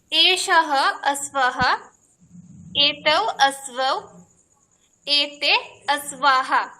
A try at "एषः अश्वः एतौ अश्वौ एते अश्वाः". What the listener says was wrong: বহু সম্যক, বহু সম্যক।